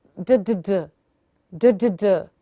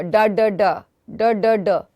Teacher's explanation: ड में ऊपर नहीं जाना टंग, ड में alveolar ridge पे आएगी